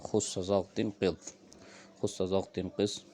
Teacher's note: استعلاء یہ ہے کہ زبان کا جو آخری حصہ ہے وہ ادا کرتے وقت آپ اس کو اوپر والے جبڑے کی طرف اٹھا دیں